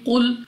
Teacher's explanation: یسألونک عن الأہلہ قل ہی مواقیت للناس والحج۔ قاف مستعلیہ میں سے ہے موٹا پڑھیں گے